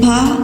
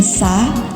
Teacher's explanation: Say pa slowly, feeling the full plug and pop for the stop. Then sa to hear the continuous hiss from narrowing.